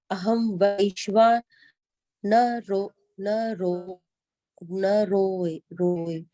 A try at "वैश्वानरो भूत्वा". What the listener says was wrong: रो रहा है? आप कह रहे हो ना रोए, ना रोए। कोई नहीं रो रहा। अहं वैश्वानरो भूत्वा।